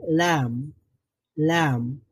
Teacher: পুরো জিহ্বার অগ্রভাগ পুরোটাই লাগবে না উচ্চারণ করার সময় একটু অংশ লাগবে লাম লাম সামনের দাঁতে লাগবে · জিহ্বার অগ্রভাগের একটা কর্নার, একটা সাইড, মানে জিহ্বার অগ্র সাইডটা লাগাতে পারেন, জিহ্বার অগ্রভাগটা লাগাতে পারেন উপরের দাঁতের গোড়ার সঙ্গে, তাহলে লাম উচ্চারিত হবে।